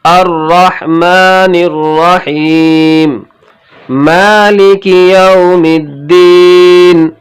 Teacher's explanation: میم کے اوپر کھڑا زبر ایک الف کے برابر کھینچنا ہے، لام اور کاف کے نیچے زیر ہے، اسے جلدی پڑھنا ہے، ذرا بھی نہیں کھینچنا ہے، اور معروف پڑھنا ہے، مجہول سے بچنا ہے۔